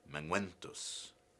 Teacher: Ke, man becomes mang, and the ke disappears.